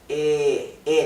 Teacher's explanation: letter e pronounced with a very open mouth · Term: the e sound